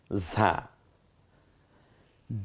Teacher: ঝিঝি আওয়াজে বাতাসটা বেরিয়ে আসবে, জিব্বাটা খানিকটা পাতলা হয়ে যাবে ভেতরে